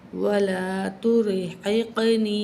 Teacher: قاف پہ کلکلا کریں گے، یعنی کہ آواز لڑکھڑاتی ہے اس میں